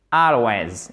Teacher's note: Accent tonique sur la première syllabe, ok?